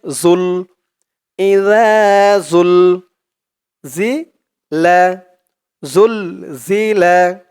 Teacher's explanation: জালের উচ্চারণটা একদম নরম করতে হবে জিহ্বার মাথা উপরের দাঁতের মাথার সাথে লাগবে